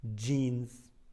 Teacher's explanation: jeans is spelled with a J, but in fact it's 2 consonants, D and J.